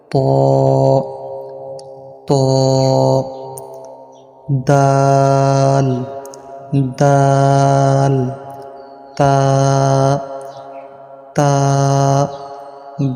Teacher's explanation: জিহ্বার আগা সামনের উপরের দুই দাঁতের ঘোড়ার সঙ্গে লাগাইয়া তিনটি হরফ উচ্চারিত হয়